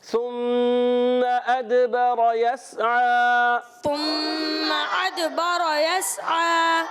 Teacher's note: یس کو سین کو نہیں ہلانا، اور عین پر کھڑا زبر ہے. عین حلق کے درمیان والے حصے سے ایک الف کھینچ کر ادا کریں گے. مل کر پڑھیں گے ثم ادبر یسعى.